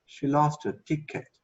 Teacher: she lost her ticket so I would go up a little more on tick